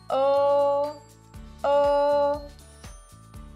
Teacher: your lips are rounded and your tongue is in the middle of your mouth